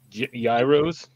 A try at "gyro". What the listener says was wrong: There's no G.